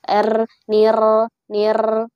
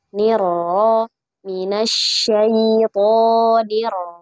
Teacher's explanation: Niro, niro. Kemudian huruf ro tidak boleh dibaca dengan banyak getaran seperti R dalam bahasa Indonesia. · Nir ya, tapi di tengah-tengah ya. Minimal hanya satu getaran saja.